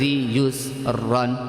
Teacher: دو زبر پر رکنا ہے تو کیا کرنا پڑے گا؟ ایک زبر کے ساتھ الف پڑھیں گے